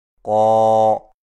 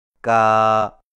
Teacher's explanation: اگر کھڑا زبر موٹے حرف پر ہو تو موٹی آواز سے پڑھا جائے گا، جیسے قو، اور اگر باریک حرف پر ہو تو باریک آواز سے، جیسے کا